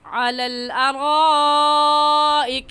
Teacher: حروف مدہ یہاں پر الف مدہ ہے کہ الف سے پہلے زبر آ جائے تو اسے الف مدہ کہتے ہیں، تو حروف مدہ کے بعد حمزہ اسی کلمے میں ہے، اس وجہ سے اس مد کو مد متصل اور مد واجب کہیں گے۔ اور اس مد کو 4 الف کے برابر کھینچ کر پڑھیں گے، نہ اس سے کم اور نہ ہی اس سے زیادہ